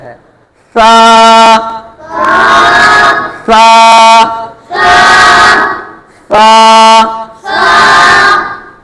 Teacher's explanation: زبان کا سیرا اور اوپر کے دانتوں کے اندرونی کنارے سے ادا ہوتا ہے. زبان کا سیرا، یہ زبان کا سیرا جو ہے اس کو اوپر والے جو دانت ہیں ان کے اندرونی کنارے سے لگائیں گے نا، یہ سا ادا ہوگا. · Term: حروف لثویہ